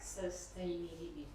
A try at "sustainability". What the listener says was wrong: Because you say it very much sustainability, because in Spanish it's sos. But in English it's the U, but it's with my sound no? Sustainability. Sustainability.